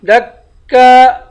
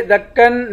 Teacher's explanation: ارض، را اور ضاد دونوں کو موٹا پڑھیں گے۔ دکا دکا، یہاں پر اخفا کریں گے، یہاں پر دکا پڑھیں گے، دکن نہیں پڑھیں گے